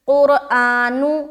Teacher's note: اس کے بعد قرآن، قاف کو را سے ملاتے ہوئے را کو موٹا رکھنا ہے